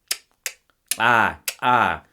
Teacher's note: the lateral click ah ah which is how you would like call a horse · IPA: ǁ